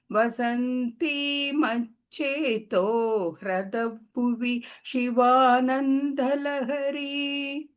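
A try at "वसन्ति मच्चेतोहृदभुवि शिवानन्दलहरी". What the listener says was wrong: Bhagini, in the last line, the bhu was not very clearly heard, but otherwise it was very good.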